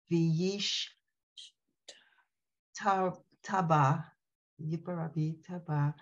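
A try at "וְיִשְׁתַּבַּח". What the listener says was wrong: Make sure you hear that head. It's not a hey. It's not silent.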